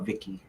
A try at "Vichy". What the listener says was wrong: You call it Vicky? It's CH, dude. It's Vichy. It's a Vichy France. Vichy.